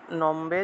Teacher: ময়ের নিচে যে বফলা আছে, এই বফলার উচ্চারণটা কিন্তু ও রূপে হবে না, এটা হলো বর্গীয় ব